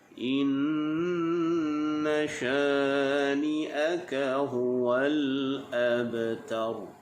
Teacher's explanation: Nun yang berbaris syaddah, hukum bacaannya adalah dengung. Sempurnakan dengung. Kemudian syani'aka, sya, huruf shin adalah huruf yang bersifat tafashi, berhamburan udara.